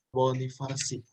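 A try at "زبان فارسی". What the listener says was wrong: Zabone bukan Farsi, tapi Forsi. Zabone Forsi. Forsi. Ya, Zabone Forsi.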